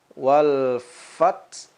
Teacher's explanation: kita hamaskan dulu, terdengar suara angin yang keluar